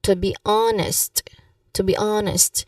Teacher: So you stress also on the first syllable of honest.